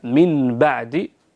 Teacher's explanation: الحكم الثاني هو حكم القلب، يعني النون الساكنة لما يجي بعد حرف الباء تقلب هذه النون الساكنة ميما أصلية